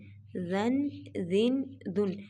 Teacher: زا جو ہے اس پہ نہ تو سیٹی پیدا کی جائے گی بلکہ اس کو نرمی سے پڑھا جائے گا